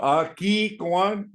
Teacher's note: you see the H is going to come right from your throat. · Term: guttural